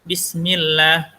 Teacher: Bismillah dibaca tipis. Kenapa? Karena sebelumnya ada huruf berharakat kasrah.